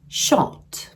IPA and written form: ʃɒt (shot)